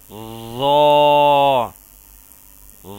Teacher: ظا کو بھی سا کی طرح نرمی سے ادا کیا جائے گا اور اس کو بھی خوب موٹا اور پر کر کے پڑھا جائے گا